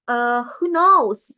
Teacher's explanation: please be careful with the intonation. You should use rising intonation at the of the sentence, so it seems like who knows?